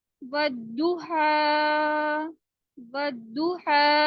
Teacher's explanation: کھڑے زبر کو 2 کاؤنٹ اسٹریچ کریں گے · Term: کھڑا زبر